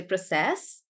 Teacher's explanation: when you use it as a verb we stress on the last bit